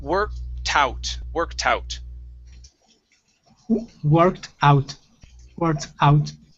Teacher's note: instead of adding the t to the end of work put it at the beginning of out